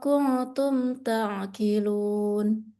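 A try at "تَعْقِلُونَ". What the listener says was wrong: Qafnya tebalin. Ta'qilun. Masih kaf. Ta'qilun.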